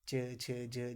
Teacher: जब हम इसका उच्चारण कर रहे हैं तो तालु से आवाज़ आ रही है, तो ये तालव्य व्यंजन हो गया।